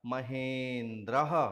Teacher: आ और ई मिलकर के दूसरे स्वर ए में बदल जाएंगे और ए को ह में मिला देने पर स्वरूप बन जाएगा महेंद्र।